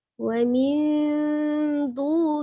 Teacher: Ya, nunnya jangan dibaca jelas ya. Jadi jangan nun yang jelas terus ditahan, tapi dia samar ya. Memang dia mendekati huruf nun daripada angnya ya, karena dia tipis. Ikhfa-nya ikhfa yang tipis ya.